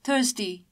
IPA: θɜːsti